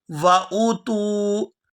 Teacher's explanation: یہاں حمزہ پیش او کو کھینچے بغیر ادا کریں گے